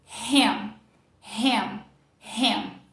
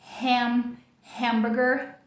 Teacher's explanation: Para você produzir ele, é como se você fosse fazer o som de E, só que abrindo bastante a boca, é um som que a mandíbula fica mais baixa mesmo. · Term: mistura do A com E